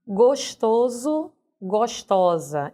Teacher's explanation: São palavras que notadamente vão ser grafadas com S, mas o som delas vai ser do fonema Z